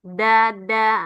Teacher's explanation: Ujung lidahnya kena pangkal gigi seri atas. Nempel.